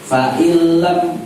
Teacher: nun mati ketemu lam itu idgham, nunnya tidak dibaca